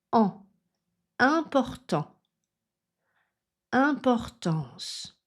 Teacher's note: la voyelle nasale en, où on a une position plus neutre, un peu plus arrondie, mais surtout pas vers l'avant, sinon on a on. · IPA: ɑ̃